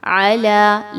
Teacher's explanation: لام پر کھڑا زبر ہے، 2 حرکت کے برابر لمبا کریں گے